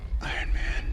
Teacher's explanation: It's just pronounced iron. The R here is silent.